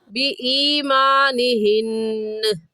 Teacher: ऐसे कहेंगे, अल्लाहु आलमु बि ईमानिहिन्न, यहाँ भी नून मुशद्दद आ गया और नून मुशद्दद पर वक़फ़ जब करेंगे तो नून को वाज़ेह करेंगे